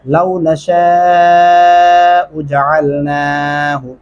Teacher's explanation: नून के ऊपर खड़ी ज़बर है, हम आवाज़ को लंबा करेंगे